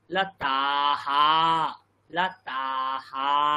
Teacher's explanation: আকারের পরে বিসর্গ বসালে আ যতটা সময় লাগলো, হা এখানেও ততটাই সময় লাগবে